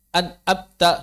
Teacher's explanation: Yang pertama, memotong suaranya saat sukun. Maksudnya menghilangkan gunahnya.